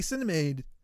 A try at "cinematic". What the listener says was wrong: It sounded like you said cinnamon.